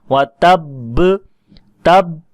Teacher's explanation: یہ با ساکن جو ہے اس کی آواز ہمیں واضح آ رہی ہے کہ ہم نے ہونٹوں کو آپس میں ملایا تو ساکن حرف ادا ہوا